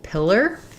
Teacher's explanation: So in pillar, we have first syllable stress.